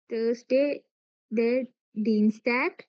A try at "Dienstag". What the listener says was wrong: Very good.